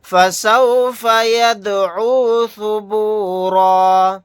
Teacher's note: دال ساکنہ یہاں پر قلقلہ کر کے پڑھیں گے.